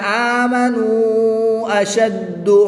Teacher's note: اندادا یحبونہم کحب اللہ والذین آمنوا اشد حبا للہ، واو مدہ کے بعد حمزہ دوسرے کلمے میں ہے تو یہاں پر مد منفصل ہوگی، 2 سے 3 الف تک کھینچ کر پڑھیں گے